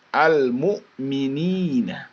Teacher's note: much langsung setelah Al ke bertemu kita menyebutkan langsung huruf sesudahnya kalau di sini ada huruf mim yaitu huruf mim itu adalah full bibir ya